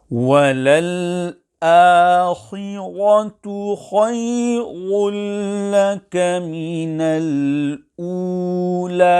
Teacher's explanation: the ra on the word walal akhiratu must be pronounced sufficiently full mouth